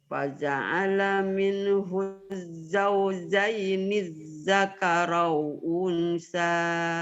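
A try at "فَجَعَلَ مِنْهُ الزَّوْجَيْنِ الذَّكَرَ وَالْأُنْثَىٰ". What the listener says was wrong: Salah. Zakaro walnya ketinggalan Oma. Zakaro wal ketinggalan.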